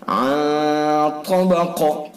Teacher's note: غنہ کریں گے، خیشوم سے ادا کریں گے